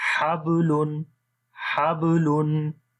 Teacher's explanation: تو جب قلقلہ والا حرف جو ہوتا ہے کسی بھی ورڈ کے مڈ میں آئے گا، جیسے درمیان میں، تو یہاں پر با دیکھیں درمیان میں آ رہا ہے، تو یہاں پر جو قلقلہ ہوتا ہے وہ کمزور ہوتا ہے، تو سختی کے ساتھ قلقلہ وہاں پر نہیں کیا جائے گا